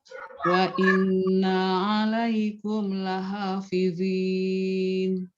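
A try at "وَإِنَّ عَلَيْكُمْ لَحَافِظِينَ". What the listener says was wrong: Nah, lebih. Beda kan suaranya juga?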